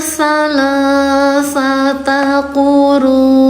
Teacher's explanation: U-nya 5, dibacanya panjangkan 5 harakat. Hukum tajwidnya MW, artinya mad wajib mutasil.